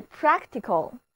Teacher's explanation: 这两个字母▁C▁都发作清辅音▁k